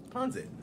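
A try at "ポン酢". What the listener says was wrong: Ponsut. Yeah, with a harder S. Pens, like ponsut. Ponsut. Well, keep in mind that this is the American pronunciation. I mean, it literally says American pronunciation. Ponsut.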